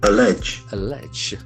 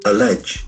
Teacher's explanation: Accent falls on the second syllable.